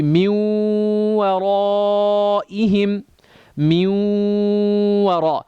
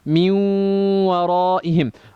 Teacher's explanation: Ghunna is extending it for 2 beats.